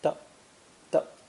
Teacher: The second pronunciation is much more common and has an unstressed neutral tone